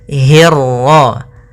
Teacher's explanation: pada lafal hirra, hi-nya tipis, ketemu ro-nya yang tebal. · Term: ra tafkhim